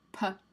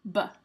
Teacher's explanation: the difference between P and B is that one is voiced and one is unvoiced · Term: bilabial plosives